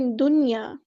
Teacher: نون ساکن کے بعد یا آیا لیکن ادغام نہیں ہو رہا. یہ ادغام کا ایکسیپشنل کیس ہے، یہاں پہ اظہار ہوگا.